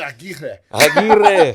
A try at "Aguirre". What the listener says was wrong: Aguirre. You got to roll them.